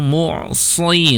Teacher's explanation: huruf sa di kasrah tetap dia harus tebal ya. Si tidak si tapi si ya.